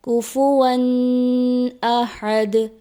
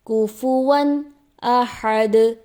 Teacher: قاعدے کے مطابق یہاں پہ غنّہ نہیں ہوگا، اس کو پڑھ دیا جاتا ہے کفواً احد، جو کہ درست نہیں۔